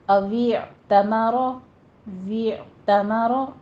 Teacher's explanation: आइन को वस्ते हलक में ले जाइए, रॉ को मुफखम करना है, पुर पढ़ना है।